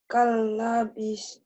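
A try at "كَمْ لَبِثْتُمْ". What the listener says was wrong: Kam. Kok kal. Kok itu mah idgham atuh. Ini kan kam. Karena idhar itu dibaca apa? Dibaca apa adanya.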